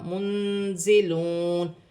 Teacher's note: یہاں پر بھی لام ساکن ہے، لام کو نون کے ساتھ ملا کر پڑھا جائے گا۔ منزلون، نون ساکن میں اخفا ہوگا، کیونکہ آگے زا حرف اخفا میں سے ہے، واو ساکن سے پہلے پیش ہے، واو مدہ بنے گی، 1 الف کی مقدار کھینچ کر پڑھا جائے گا۔